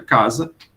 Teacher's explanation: Em vez de um S, você pronuncia um Z, né? Porque a gente aprendeu que um S entre duas vogais tem som de Z.